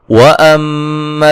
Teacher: میم مشدد پہ غنہ ضروری ہے ، ذی یا مدہ ہے، با پہ قلقلہ کریں گے، یضت